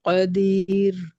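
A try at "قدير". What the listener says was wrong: कदीर पे थोड़ा और टाइम लगाए, मद्दे असली है कदीर, ऐसे करके रोकेंगे, ठीक है।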